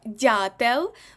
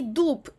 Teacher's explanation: в слові дятел у нас буде звук дь а в слові дуб у нас буде звук Д